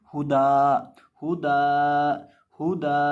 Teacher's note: यानी ये जो दाल के साथ एक ज़बर है, दाल के ऊपर 2 ज़बरें हैं ना, एक ज़बर गिर जाएगी, एक ज़बर बाकी रह जाएगी और एक अलिफ के बराबर इसको दाल को खींच के पढ़ेंगे